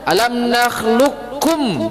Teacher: Idgham kamil adalah memasukkan huruf qaf ini ke huruf kaf secara sempurna. Secara sempurna itu maksudnya apa?